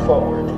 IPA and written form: 'fɔ:wəd (forward)